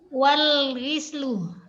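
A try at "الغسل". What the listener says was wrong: Ghuslu pakai dhamma.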